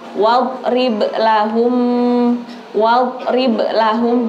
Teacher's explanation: enggak boleh memantulkan sampai ada dnya karena dia bukan huruf qalqalah. Cukup wad wad seperti itu.